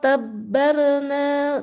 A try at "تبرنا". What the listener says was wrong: Jangan tabarna. Tabarna dia tipis. Tabaru. Tebal. Tabaru. تبرنا تتبيرا.